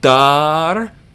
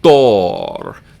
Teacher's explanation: Here we have dar, and here we have dor, because you're not just deepening your voice, but you're pronouncing the D sound a little bit deeper in your throat